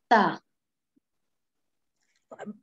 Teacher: Ta, from the tip of the tongue and the front teeth, sanaya ulya, the tip of the tongue should touch to the front sanaya ulya teeth.